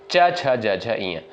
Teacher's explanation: च वर्ग का जो है उच्चारण स्थान किससे होता है? तालु से होता है।